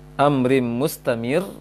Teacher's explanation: Kemudian di ayat ketiga yang dengung amrim mustamir, ini idgham juga, menggabungkan bunyi nun sukun pada kasratain ke dalam mim secara sempurna, idgham kamil.